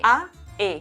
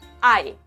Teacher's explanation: en español o en italiano cuando tenemos a e, siempre vamos a tener dos soplos de aire, a e, mientras que en latín solo era uno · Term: diptongo